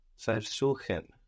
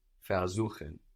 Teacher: We have the accent on suchen, showing us that ver stays put.